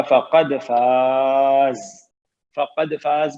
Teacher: فقد دال پہ سکون ہے، قلقلہ ہوگا